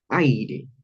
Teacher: Esta primera sílaba, el ay, definitivamente es tónica. Entonces, esto definitivamente aquí recae un tiempo marcado.